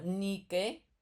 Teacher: el acento agudo va en la penúltima